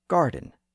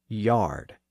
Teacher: Garden has the original hard G sound preserved by the Franks and yard has the softer Y sound used by the Anglo-Saxons